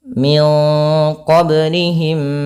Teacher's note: ya mim ketemu mim Min qoblihim ya cara membacanya memasukkan mim yang pertama kepada mim yang kedua